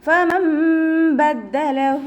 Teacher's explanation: നമ്മുടെ മേലെ മുൻപല്ലിൻ്റെ അറ്റം താഴെ ചുണ്ടിൻ്റെ ഉൾവശത്ത് നനഞ്ഞ ഭാഗത്ത് വെച്ചിട്ട് ഉച്ചരിക്കുക കേട്ടോ. ലൈറ്റാക്കിയിട്ട് ഉച്ചരിക്കുക.